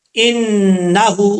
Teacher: اس کے بعد ہے انہو، نون کے اوپر شد ہے، غنہ کریں گے 1 الف کی مقدار۔ نون کے بعد جو ہا ہے اس ہا کے اوپر الٹا پیش ہے، 1 الف کی مقدار، اس کو بھی لمبا کر کے پڑھا جائے گا